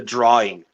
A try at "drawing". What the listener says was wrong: 2 more R's. It's 2 extra R's.